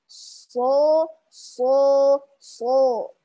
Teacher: makhrajnya sama seperti sin dan zai, yakni di ujung lidah sejajar dengan ujung gigi seri bawah.